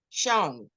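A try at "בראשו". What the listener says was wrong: Show. No, nothing at the end, just show. Show. You got a vowel under there, so you have to hear all of it.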